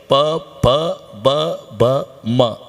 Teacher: ओटाला ओट लागल्याशिवाय उच्चार होत नाही, हे वष्टे आहे. प प ब ब म अख्खी लाईन.